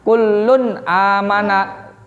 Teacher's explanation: jelas itu maksudnya tidak ada dengungnya ya Jadi tidak boleh membacanya dengan Wulung aman enggak boleh ya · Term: izhar